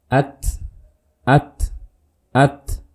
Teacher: Saat sukun suaranya tidak dialirkan, tapi yang terdengar hamsnya.